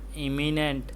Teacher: Once again, the stress is on the first syllable. The im in the first syllable sounds like the im in words like important, impossible, and im.